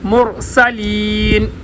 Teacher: سین کے اوپر سیٹی جیسی آواز